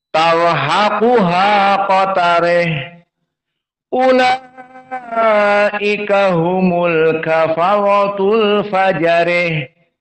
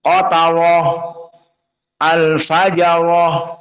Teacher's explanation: qatarih dan al-fajarih sama-sama dalam keadaan muraqqaqah.